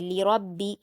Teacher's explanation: پڑھیں گے، را کو با سے ملا کر پڑھیں گے، لربی، با پر تشدید ہے سختی کے ساتھ جلد پڑھیں گے